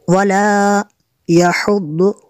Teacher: दौद और दाल में फ़र्क होना चाहिए। वला यहुद्दु दौद को पुर करेंगे।